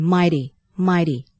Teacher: เสียงนี้ก็คือเสียงTซึ่งเป็นทีก้องนะคะอย่างไรก็ตามก็ไม่ใช่เสียงdค่ะ